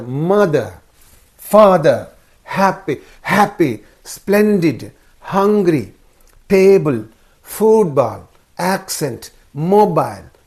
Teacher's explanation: So, of the two syllables, the first syllable receives the stress. That means you should mark the vertical bar only on the first syllable.